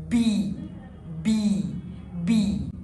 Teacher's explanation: يعني انا لو حطيت ايدي على الاحبال الصوتية وانا بقول حرف البي هيحصل vibration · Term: voiced letter